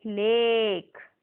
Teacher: two sounds coming together in vowel a and we stretch the sound of vowel a